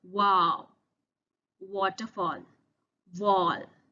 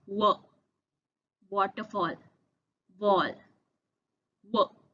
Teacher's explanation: in waterfall, wall, the lips open up wide, making a deep W sound